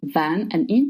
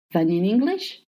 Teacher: Did you notice that I just linked then and in together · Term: linking words together